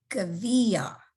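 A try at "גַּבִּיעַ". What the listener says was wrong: Yes, yes, it's a vav, gavia.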